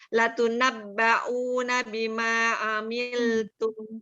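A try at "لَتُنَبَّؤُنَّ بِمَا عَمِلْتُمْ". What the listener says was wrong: Dengungnya ditambah. Latunabba'unna bima amiltum.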